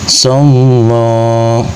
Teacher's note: Maka cara membunyikannya, lafaz Allah dibaca secara tafkhim atau dibunyikan dengan suara tebal sebab lafaz Allah sebelumnya didahului harokat fathah atau baris di atas.